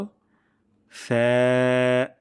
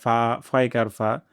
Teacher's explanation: নিচের ঠোঁটের পেট এবং সামনের উপরের দুই দাতের আগা থেকে আমরা উচ্চারণটি করব পাতলা সাউন্ডে যেন এমন না হয় ফা ফারফা বাংলা বর্ণমালার মতন এমনটি হবে